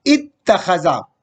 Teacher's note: یہ حمزہ جو ہے تا میں تبدیل ہو گئی اور پھر وہ تا جو ہے باب افتعال کی تا کے ساتھ مل کے مدغم ہو گیا ہے تو اتخذا آ جائے گا.